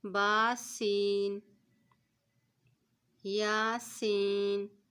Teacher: سین سیٹی والا حرف ہوتا ہے، اس کو ادا کرتے وقت سین کی سیٹی کی آواز آتی ہے